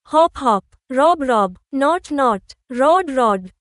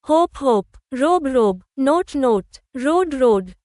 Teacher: তালিকা 1 এর শব্দগুলোতে ও এর উচ্চারণ ছোট অ ধ্বনির মতো হয়। আর তালিকা 2 এর শব্দগুলোতে ও এর উচ্চারণ লম্বা ও ধ্বনির মতো হয়।